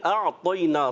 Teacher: اعطینا طا کو موٹا رکھنا ہے